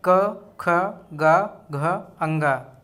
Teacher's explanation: क ख ग का यह कंठ से उच्चारित होते हैं